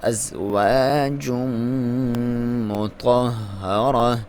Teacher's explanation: یہاں پہ تنوین ہے, میم کے ساتھ ادغام ہوگا کیونکہ حروف جر ملون میں سے, میم حروف جر ملون میں سے ہے, اور یہاں پہ آپ نے جب ادغام مکس کرنا ہے تو آپ نے میم پہ اپنے غنہ کے ساتھ ادغام کرنا ہے, اور اس کی غنہ کی لمبائی ایک الف کے برابر.